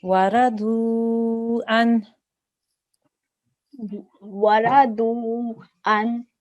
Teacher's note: this is a waw madda, so you need to elongate that sound for 2 seconds.